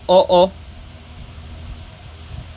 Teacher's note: यह आपका कंठोष्ठ से आ रहा है